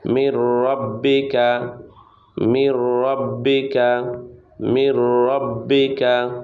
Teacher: মিমে জের নুনে জজম নুন সাকিন। নুন সাকিনের বামে র ইদগমে বেলাগুন্না। গুন্না ছাড়া মিলিয়ে পড়তে হয়। মির রয়ে জবর বায়ে তাসদিদ।